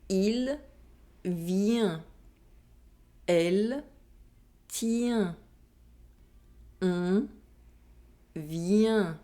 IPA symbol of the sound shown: ɛ̃